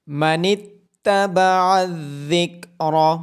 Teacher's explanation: من اتبع الذکر، ذال کی آواز نرمی سے آئے گی اور را کو موٹا کر کے پڑھا جائے گا، عین کو گلے کے درمیان سے ادا کیا جائے گا